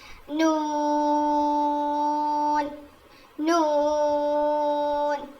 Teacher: نون نون، یہ بھی سیم لام اور را کا مخرج ہی ہے کہ زبان کے کناروں کو لیفٹ اور رائٹ سائڈ کے داڑوں کو لگانے سے ادا ہوتا ہے